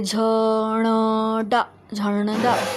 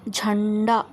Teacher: इसे बोलते समय हमारे नाक से वायु बाहर निकलती है। अनुस्वार का उच्चारण नाक से होता है